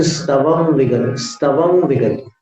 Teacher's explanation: कर्तुन स्तवम विगत, स्तवम विगत, कर्तुम के अनुस्वार का उच्चारण न के समान, स्तवम के अनुस्वार का उच्चारण उसमें वी में मिलाना, संवर के समान